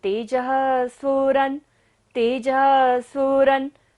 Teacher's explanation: विसर्ग है तो सांस का विसर्जन करेंगे, ध्वनि का सारा विसर्जन।